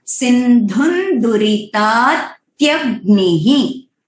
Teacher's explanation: अनुस्वर का वहां पे साउंड विल बी सिंधुन दुरिता, क्योंकि द जो है वो त वर्ग में है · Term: अनुनासिक साउंड